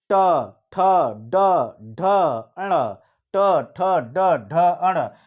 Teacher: आपको बताया कि ट, जैसे ट बोलिए तुरंत आपका जो जुबान का अगला हिस्सा तलवे को टच करेगा और वो जो है वो भी मुड़े हुए, ऊपर आगे का हिस्सा मुड़ के टच करता है तलवे को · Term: मूर्धन्य